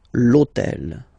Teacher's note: in French we don't pronounce H. Okay, so basically the first sound of the word is the vowel O.